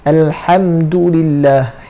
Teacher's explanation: Huruf ha makhrajnya di tengah kerongkong.